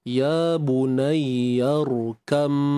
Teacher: Ba dengan mim ni dia punya status adalah huruf yang sama makhraj beza sifat. · Huruf ba ni dah dimasukkan ke kepada huruf mim. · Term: tajanus, idgham